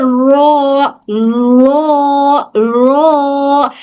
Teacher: जब जुबान की नोक ऊपर मुखाबिल के तालू से चिपकती है थोड़ा सा गैप रहता है इसका मतलब मतलब एक सुराख बन जाती है।